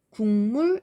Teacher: 국물도 국물 이렇게 발음하죠. 그가 응으로 바뀌었어요. 비음으로 바뀌었어요. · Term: 비음화